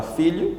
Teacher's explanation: tem por sílaba tônica fi, que é também a penúltima.